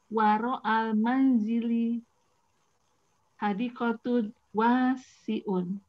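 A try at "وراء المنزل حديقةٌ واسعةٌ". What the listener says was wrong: Nah, itu yang saya bilang korupsi. Tunnya kemana tunnya? Ada 2.2-nya. Tun gitu. Hadikotun wasiatun gitu.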